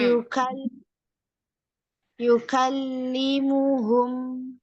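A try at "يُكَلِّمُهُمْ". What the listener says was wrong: Lamnya Kak jangan kendor. Yukali, yukali. Nah, yukallimuhum.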